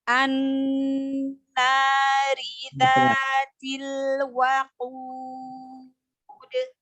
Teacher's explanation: nun tasydid gunnah, didengungkan, dialirkan suaranya ke hidung. · rinya dibaca tarkik atau tipis karena rinya berharokat kasroh, ya, roknya berharokat kasroh, maka roknya dibaca tipis.